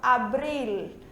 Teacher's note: Geralmente, quando a gente fala em português, o nosso L sai com som de U, abril, certo? Em espanhol, a gente pronuncia o L, a língua toca no céu da boca